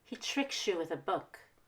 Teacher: I'm going to stress tricks and book tricks as a verb book is a noun don't stress he or you because those are pronouns don't stress